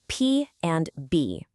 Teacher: Say the sounds P and B. Feel that? Both of your lips come together. That's called bilabial.